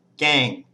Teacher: it's a mid-class initial consonant it's a live syllable so it has a mid-tone